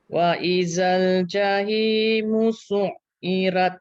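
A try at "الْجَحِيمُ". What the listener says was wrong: Okey, betulkan ha ni. Ha tu bagi pedas lagi bunyi dia. Jahimu.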